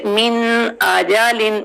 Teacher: اب اس کو بہت جلدی سے نہیں پڑھنا، من نہیں پڑھنا، سکون سے، من آجالن، من نون میں اس کو کلیئر، نون کی ساؤنڈ نوز میں جائے گی تو ہم نے اس کو کلیئر کرنا ہے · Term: نون ساکن